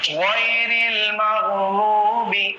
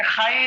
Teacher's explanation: عرب کا لہجہ ہمیں یہ بتاتا ہے کہ غین اور خا کو ہمیشہ کیا ہے؟ موٹی آواز میں پڑھو.